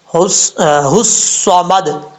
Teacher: اور اس کے بعد ہے صاد، ہا کو جب صاد سے ملائیں گے الف لام بیچ میں گر جائے گا